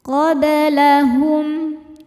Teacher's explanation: Ba sukun hukumnya qalqalah sughra, karena ba sukunnya sukun asli dan ada di tengah bacaan. Cara bacanya dipantulkan dengan pantulan yang kecil.